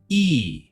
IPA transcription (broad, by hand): iː